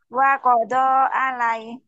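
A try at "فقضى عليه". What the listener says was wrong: Nah, bukan wa fa. Faqadha alaihi.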